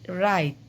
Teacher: রাতিটাকে যদি আমরা রাইত উচ্চারণ করি তখন এই স্বরধ্বনিটা পরের স্বরধ্বনিটা আগে চলে আসে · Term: অপিনিহিতি